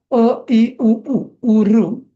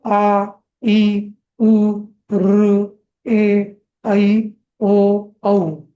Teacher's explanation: दीर्घ स्वर म्हणताना आ इ उ ऋ ए ऐ असं दोन मात्रा लागतात, डबल वेळ लागतो